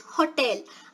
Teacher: now if you stress the first syllable it is Hotel